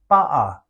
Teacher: what is known in the grammar world as glottal stop where the sound between two vowels is replaced with a brief pause or closure of the vocal cords